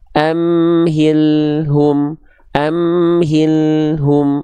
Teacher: lam harus mengalir sedikit suaranya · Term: lam sukun